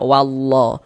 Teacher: jangan dibaca walla walla jangan tapi kita baca wallah